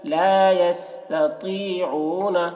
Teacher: طا کو پر پڑھیں گے کیونکہ طا حروف مستعلیہ میں سے ہے